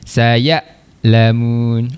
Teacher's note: Dia tertahan sebab sifat huruf hamzah tu ada syiddah, tertahan. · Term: hamzah sukun